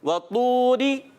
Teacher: اس میں پیارے بچوں واو ہونٹوں کی گولائی سے طا کے اوپر پیش، پھر واو آ گیا، اس وجہ سے ہونٹ مسلسل گول رہیں گے